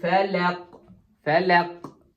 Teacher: hər ayənin axırında biz dayanırıq deyə sükun gəlir və qəlqələ baş verir